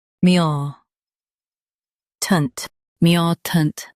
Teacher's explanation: Stress mu and soften tant.